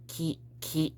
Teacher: We're not beatboxing out here, okay? So kind of a breathy key sound, if you can try to make it in a more gentle way